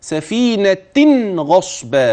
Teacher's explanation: وابين النون الملفوظ ما بين كلمه سفينه وبين كلمه ابتداء غصبا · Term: نون التنوين الملفوظ, نون التنوين الملفوظة